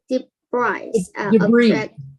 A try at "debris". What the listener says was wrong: Debris. Yeah, the S is silent. You don't hear it.